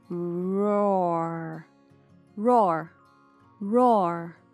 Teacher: Para pronunciar roar, você tem que enrolar a língua no começo e no final, quase que imitando o som de um bicho.